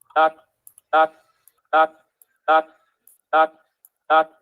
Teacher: na na sílaba você v justamente no início da vocal então é o que a gente chama de coarticulação é o n influenciando a vogal